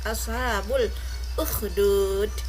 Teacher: Ashabul alif lam qamariyah ya, karena tidak ada tasdid di sini, lamnya terbaca dengan jelas.